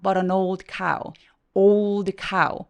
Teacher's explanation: old cow 할 때 O 이중모음으로 발음해 주시고요